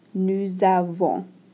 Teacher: You might have noticed that this is a nasalization right here. We don't pronounce the S and we nasalize this N.